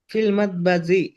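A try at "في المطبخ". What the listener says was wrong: এটা হচ্ছে খ। হ্যাঁ, ফিল মাতবাখি কি হবে? হ্যাঁ, ফিল মাতবাখি।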